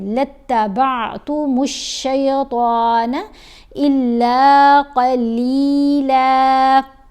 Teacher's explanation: قاف کو موٹا پڑا، طا کو موٹا پڑا